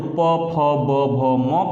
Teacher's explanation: दोनों हमारे होठ ओष्ठ आपस में स्पर्श करते हैं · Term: ओष्ठ व्यंजन